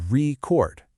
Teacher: I might listen to a vinyl record with the stress on re, but then I might use my phone to record a conversation, stressing the chord. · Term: stress shift